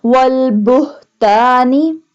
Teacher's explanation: اب اس ہا کو حلق کے درمیان والے حصے سے ادا نہیں کیا جائے گا بلکہ حلق کے نچلے حصے سے ادا کیا جائے گا